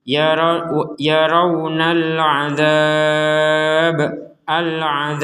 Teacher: huruf ba fathah ini kita baca dengan sukun sehingga menjadi yaaralab alab yang huruf ba awalnya berharakat fathah karena